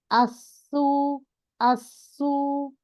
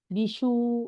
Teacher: বিসুরহ, বিসু বিসুরতিম আপনারটা বিশু কেন হচ্ছে দাঁড়ান, বিশু হচ্ছে কারণ আপনার নিচের দাঁতের গোড়ায় জিহ্বাটা যাচ্ছে না, জিহ্বাটা ইয়ার মাখরাজে চলে যাচ্ছে